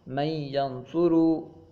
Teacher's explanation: کیونکہ نون ساکن کے بعد حروف یرملون میں سے یا آ گئی، جس کی وجہ سے ہم نے نون کو یا میں ملا دیا. من ینظرو، یہ ہے ادغام.